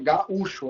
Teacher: Todo mundo concorda que o som forte é o U. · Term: sílaba tônica